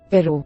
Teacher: a tap rather than a trill, as in the Spanish word pero